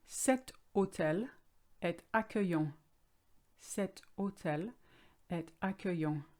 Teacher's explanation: the word hotel has a silent h in french therefore the sound is o